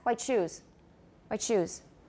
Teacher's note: The T and the esh will go together quickly, and then we will hear the ch.